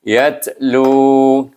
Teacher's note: Kemudian lu itu bertemu dengan waw, maka kita baca dengan mat asli. Sebab huruf waw jadi huruf mat sebelumnya baris depan.